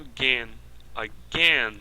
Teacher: veja que o a foi reduzido a chua esse a que não recebeu o assento não recebeu o stresse